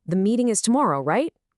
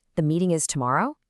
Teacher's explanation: That rising tone does all the work of right